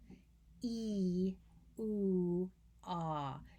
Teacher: You feel your tongue very high and tight, and we'll get to that one in a minute, but it's very high within the oral cavity for E, and then it's in the mid section of the oral cavity for oo, and then very low for ah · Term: tongue height